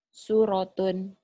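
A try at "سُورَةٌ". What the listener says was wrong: Sunya panjang.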